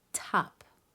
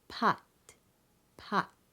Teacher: So an aspirated burst of air is released. The same consonant t will sound quite different at the end of a word where it is unreleased, such as pot, pot.